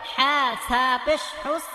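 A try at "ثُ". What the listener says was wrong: এটা সা না, এটা থা, জিব্বার আগা দাঁতের আগা, নরম হবে, নরম করে পড়তে হবে। 13 নম্বর মাফলাজ, জিব্বার আগা দাঁতের আগা, থা। হা থা পেশ হুস। গুড, জিব্বাটা বের করে দিলে আর উস এই আওয়াজটা হবে না।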